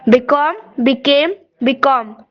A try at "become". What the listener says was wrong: So, when you're pronouncing become, I think you are stressing that come, become. It's not become. You can very easily say it become. Become, became, and become.